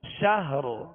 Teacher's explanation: خير من 1000 شهر. را کے مخرج پر آواز اور سانس توڑ دیں، یعنی را کو ساکن کر کے